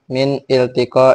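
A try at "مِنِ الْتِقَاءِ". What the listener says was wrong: Jangan min minil. Nah, itu namanya hamzah wasol gitu loh. Kalau hamzah koto itu min il, maka kan itu bukan wasol, bukan koto, wasol.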